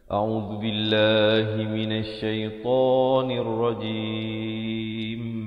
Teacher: A'udzu, zu di hujung lidah. Billah, lafzul jalalah dibaca nipis.